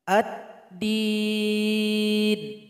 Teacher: lem sudah bergabung 100% kepada huruf Dal tengahnya tidak dibaca lagi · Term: idgham Syamsiah